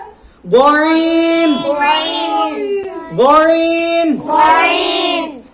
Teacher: কণ্ঠনালীর শেষে উচ্চারিত হবে গইন গইন